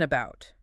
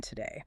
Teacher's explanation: It's a reduced, unstressed, super efficient vowel. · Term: schwa